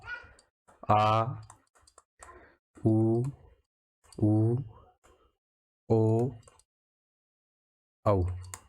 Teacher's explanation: इसमें जीभ का पिछला भाग काम करता है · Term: पश्च स्वर